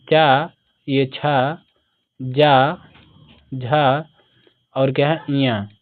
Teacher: ये सभी क्या है ताल से उच्चारित होते हैं।